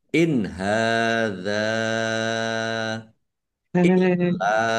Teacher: Nun sukun bertemu dengan huruf ha, bacaan idhar. Idhar khalqi. Ya, dibaca jelas.